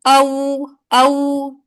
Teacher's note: होंठों को गोल करने से अदा हुआ। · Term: वाव